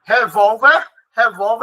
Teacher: Revólver é uma palavra paroxítona terminada em R, por isso que é acentuada, a sílaba mais forte é a segunda